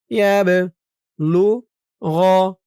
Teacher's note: বাটা কলকলার হরফ ধাক্কা দিয়ে পড়তে হবে